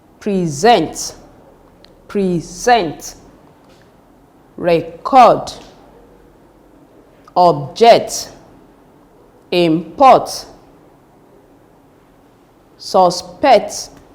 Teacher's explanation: All these are examples of verbs with two syllable words, and they are stressed on the second syllable.